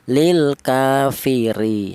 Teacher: Di sini ada huruf ro di mana huruf ro ini berharakat kasrah. Ini dibaca tarkik atau dibaca tipis ya.